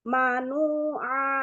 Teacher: Nunya 2 harokat. Ditahan sedikit lagi.